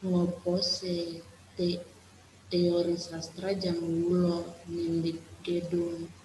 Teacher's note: Pemarka intonasi yang produktif digunakan adalah se dan a, karena keduanya memarkahi adanya intonasi menaik dalam on dan modus interogatif yang cenderung muncul dalam tuturan percakapan tanya jawab.